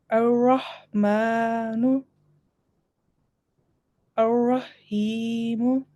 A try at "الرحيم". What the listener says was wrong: Okay, here on the ha, there is no shadda, so you don't have to make a stress on ha.